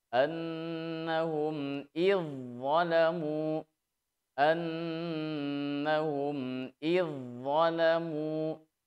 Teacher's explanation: Nah, hanya di dalam prakteknya zal ketemu huruf dha terjadi hukum idgham mutajanisain. Sehingga huruf zal kemudian melebur ke huruf dha. Ya, sehingga membacanya annahum idzalamu, annahum idzalamu, langsung ke huruf dha.